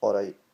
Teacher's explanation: Just say it like, alright, that T doesn't get said, it comes for the back of the throat, really